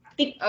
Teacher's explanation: because there are two Ks, right? So you put emphasis on that K.